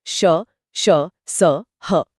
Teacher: इनको बोलते समय हवा मुंह में घर्षण के साथ निकलती है जिससे एक गर्मी पैदा होती है। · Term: संघर्षी व्यंजन